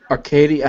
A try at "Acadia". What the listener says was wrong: Acadia. Okay, I was only emphasizing the to de-emphasize the R. There is no R, so it's Acadia.